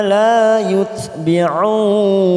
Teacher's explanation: kita panjangkan 4 harokat karena kita wakaf di sini untuk mengambil nafas.